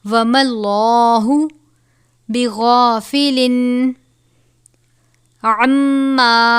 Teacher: اشدل عذاب. وما اللہ، اللہ کے لام سے پہلے زبر ہے تو اس لام کو پر پڑھا جائے گا